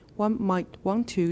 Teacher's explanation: don't make might too long. It's might, because it's voiceless at the end.